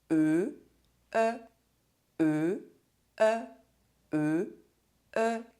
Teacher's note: The tongue is a bit forward, not as much as with the closed E sound - [ø]. The lips are rounded and the mouth is almost open. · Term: open E sound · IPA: [œ]